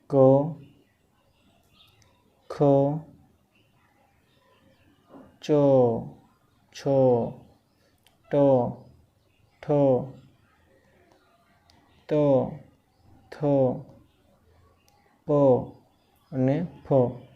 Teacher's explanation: તો જે હવાના તંત્રીઓને કંપાવે નહીં, તો કંપન થાય નહીં અને કઠોર અવાજ નીકળે. કંપન ના થાય એટલે ડાયરેક્ટ જે કઠોર અવાજ નીકળે, કોમળ અવાજ નીકળે અને કઠોર અવાજ અઘોષમાં નીકળે. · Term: અઘોષ વ્યંજન